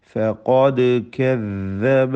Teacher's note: വഇയുകദ്ദിബൂക ഫഖദ് കദ്ദബ ഫഖദ് ഖാഫ് തഫ്ഖീം ചെയ്ത് തടിപ്പിക്കേണ്ട അക്ഷരമാണ്. ദാലു ഖൽഖല നൽകി സുക്കൂനിനെ ഹറക്കത്ത് പോലെ ശബ്ദം ചലിപ്പിച്ച് വ്യക്തമാക്കേണ്ട അക്ഷരമാണ്.